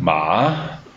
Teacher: with a falling Rising tone